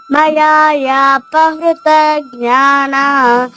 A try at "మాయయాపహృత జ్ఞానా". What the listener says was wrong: మయా కాదమ్మా, మాయయా